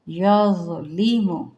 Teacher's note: یظ تھوڑا سا پر پڑھیں گے لیکن نرمی کے ساتھ